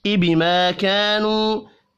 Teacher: अलिफ मद्दा और वाव मद्दा तीनों एक एक अलिफ के बराबर खींच कर पढ़े जाएंगे